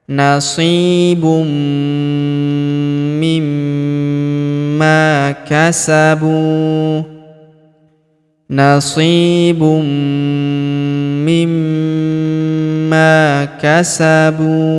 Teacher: Huruf bu kita panjangkan dua harakat karena wau sukun di depannya alifnya tidak dibaca.